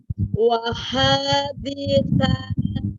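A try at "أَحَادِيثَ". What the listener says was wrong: Ahadisa. Aha ya. Aha, bukan waha. Ahadisa.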